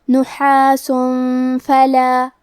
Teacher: فا حروف الاخفاء میں سے ہے تو ہمیں یہ حکم کو غنہ کے ساتھ ادا کرنا ہے